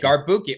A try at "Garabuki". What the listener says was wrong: There's an I on there.